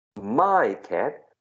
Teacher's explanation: there's no linking there right because you are stressing the possessive